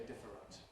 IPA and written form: ˈdɪfərənt (different)